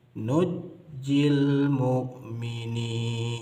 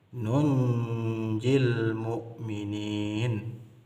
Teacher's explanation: dibaca dengan membaca huruf nun-nya satu saja Kemudian Nun sukunnya di idgham kan kepada huruf Jim